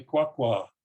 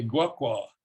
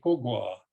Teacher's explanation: it doesn't matter what the voicing of the syllable initials is as long as you have the five five three three tone